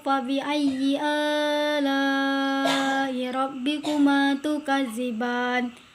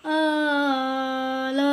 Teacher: Wajib mutasil ini yaitu huruf mat tabi'i bertemu hamzah dan ini dalam satu kata atau bersambung. Cara membacanya atau panjang bacaannya yaitu hukum mat wajib mutasil ini adalah wajib 6 ketukan.